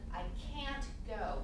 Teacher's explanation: We have a very clear ah sound there.